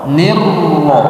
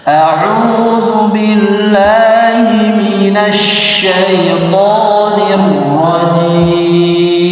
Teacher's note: ketika tasdid getarannya baru dikurangi, tidak arrah, tidak begitu, tapi hanya di awal saja, ulang, nirro, jangan nir, ya, getarannya dikurangi. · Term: takrir